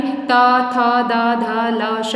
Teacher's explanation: इनका प्रयोग हम दांतों के माध्यम से करते हैं, इसलिए दंत में कहलाए